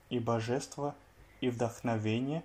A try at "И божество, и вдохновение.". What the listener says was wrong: И божество, и вдохновение. Alors là, donc вдохновение, c'est bon. Par contre, божество, tu as dit божество, божество. Non, non, non, l'accentuation est sur le O final, la dernière syllabe. Donc c'est божество, и божество.